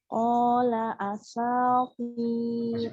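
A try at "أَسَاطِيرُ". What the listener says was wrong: Asa, coba asa. Ya, jadi yang panjang sinnya, hamzahnya nggak panjang ya. Asa terus digabung. Wiru.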